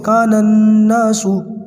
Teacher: یہ نون غنہ ہے، نون کو نون سے ملاتے ہیں تو آواز تھوڑی لمبی کر کے پڑھتے ہیں، کانناسو. دیکھیں اس لفظ کے اندر میں نے نون کو نون سے ملایا ہے.